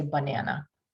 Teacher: uh there's two schwas in the unaccented syllables ba man uh so when our voice is down like that and unaccented we hear that schwa sound